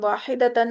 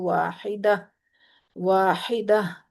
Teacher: واحدتن، اس کو جب ویسے تو ہم واحدتن ہی پڑھیں گے، لیکن جب ہم وقف کریں گے اس پہ تو واحدہ، واحدہ، تا جو ہے اس کی ساؤنڈ ہا میں بدل جائے گی اور وہ بھی ساکن ہا میں